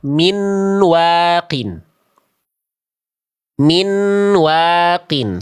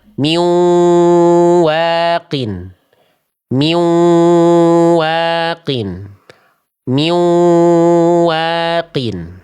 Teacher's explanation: Karena nunnya masih terdengar jelas, belum dibaca idgham.